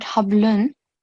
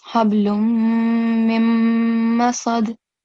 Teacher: make sure that you make the nasal sound, but the sound of noon won't be clear. So it's not hablun, it's hablum mim masad.